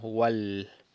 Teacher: decimos wal y no pronunciamos el alef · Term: hamzatul wasl